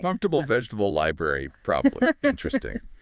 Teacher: comfortable often has a syllable dropped